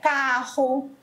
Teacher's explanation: Que é o R que sai daqui do fundo da garganta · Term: R gutural